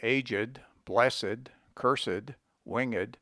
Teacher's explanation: as for instance in aged blessed cursed winged used as adjectives the e must by no means be suppressed